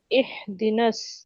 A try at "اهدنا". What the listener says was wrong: ইহ হ্যাঁ এটা গলার ভিতরে যাবে না।